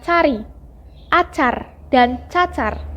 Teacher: Dilafalkan dengan cara mula-mula menempatkan daun lidah pada langit-langit keras. Lalu udara dihembuskan keluar sehingga lidah terlepas dari langit-langit itu. Secara umum, fonem C ini direalisasikan sebagai bunyi C seperti pada kata cari, acar, dan cacar.